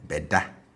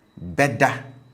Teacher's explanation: it's low on the ingressive prefix and the tone on the future tense marker is high